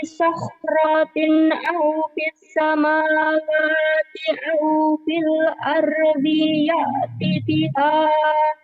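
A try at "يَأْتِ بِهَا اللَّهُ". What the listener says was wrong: Bihanya jadi pendek. Ya bihallah. Bihanya jadi pendek ti. Bihallah.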